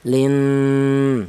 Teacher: Cara bacanya didengungkan panjang 2 ketukan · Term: gunna